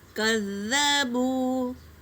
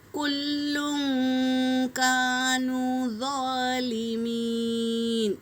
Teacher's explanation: یہ ذال کا بھی مخرج ذو ہے نا، یہ ذال اور ذو دونوں دانتوں کے بیچ میں زبان کی ٹپس ڈال کر ادا کریں گے